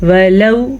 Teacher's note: واو ساکن سے پہلے زبر ہے تو یہ واو لین ہے، اسے ہم کھینچ کے نہیں پڑھیں گے